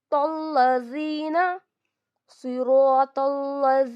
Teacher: रा को 2 counts stretch करेंगे, तो को लाम से मिलाएंगे